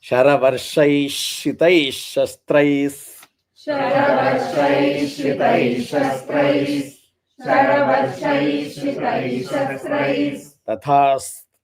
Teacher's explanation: Again Shastraihi Tatha will become Shastrais Tata.